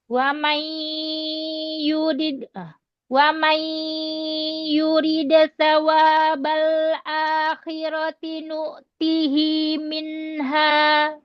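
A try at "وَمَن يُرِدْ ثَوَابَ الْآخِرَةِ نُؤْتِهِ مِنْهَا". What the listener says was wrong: Sawa, wawnya monyong lagi. Wa may yurid thawabal akhirati nu'tihi minha.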